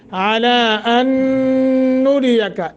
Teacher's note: عَلَىٰ کے اوپر مد منفصل ہے، دو الف کے برابر لمبا کر لیں